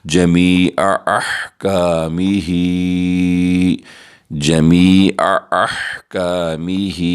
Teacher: ہا کے نیچے کھڑی زیر بھی ہے، چھوٹی مد بھی، ہم اسے 3 الف کی مقدار 3 سیکنڈ تک کھینچ کر پڑھیں گے · یا ساکن ہے، یہاں پہ ہم مدہ کریں گے اور عین حلق سے ادا کریں گے، اور حا کو صاف آواز کے ساتھ پڑھیں گے ، اور الف ساکن ہے احکامہ کاف کا، تو اس پر